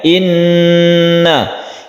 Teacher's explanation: nun yang bertasydid itu gunnah musyaddadah, kita dengungkan, kita panjangkan.